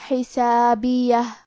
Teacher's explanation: حرف الحاء کی ادائیگی حلق کے درمیان والی حصے سے ہے. آخری میں یہ کلمہ پہ رکیں گے تو ہا پہ رکیں گے، لہذا ہمیں ہا کو ظاہر کرنا ہے.